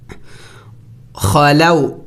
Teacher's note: خا موٹے حروف میں سے ہے اور حروف حلقی میں سے ہے، اور حلق کے اگلے حصے سے ادا ہوگا. خا زبر خا، لام واو زبر لو.